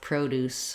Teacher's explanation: So produce, like fruits and vegetables, we just stress on pro, and then we still have deuce, produce.